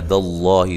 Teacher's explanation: لفظ اللہ کو موٹا ادا کرنا ہے، اس سے پہلے زبر ہے